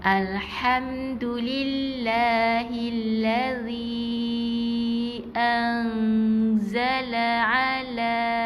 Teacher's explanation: Jadi bunyi tambah G, sengau di hidung, naik ke hidung. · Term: ifak hakiki